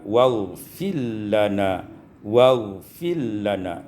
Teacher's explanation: idghamur ra fil lam, diidghamkan ra pada lam